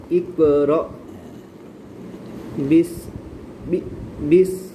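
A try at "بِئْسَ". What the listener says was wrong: না, বাজে বি, বি লাগবে হামজার সাথে, বি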